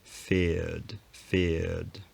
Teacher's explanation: said that there was a trace of a r sound left there's no rhotic consonant anymore but the vowel does still have an echo of it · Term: off glide